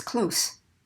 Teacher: the noun or adjective part is going to be the voiceless consonant